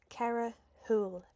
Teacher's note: a shvu actually makes the word soft. So it's not going to make a harsh shh sound. It's going to make a lovely soft h sound. So like it just goes straight to a h. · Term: soft huh sound